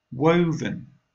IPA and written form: ˈwəʊ.vən (Woven)